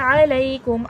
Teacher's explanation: आइन हुर्फ़ हल्क़े से है, हलक़ के दरमियानी हिस्से से अदा किया जाएगा